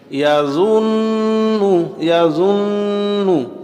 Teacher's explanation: নুনে আমি গুন্নাহ করেছি, কারণ আমি দেখতে পাচ্ছি নুনের উপরে তাসদিদ। আমরা জানি নুনে অথবা মিমে তাসদিদ থাকিলেই গুন্নাহ করিতে হয়, আশেপাশে কোন হরফ আছে না আছে দেখার কোনো দরকার হয় না।